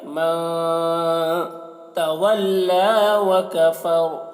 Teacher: الا من، نون میں اخفا کریں گے